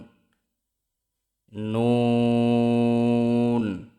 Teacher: জিহ্বার আগা তার বরাবর উপরের তালুর সঙ্গে লাগিয়ে উচ্চারিত হয় নুন